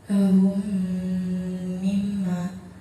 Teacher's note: Di situ ada mim mati bertemu dengan huruf mim, maka cara bacanya diidghamkan. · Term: idgham misai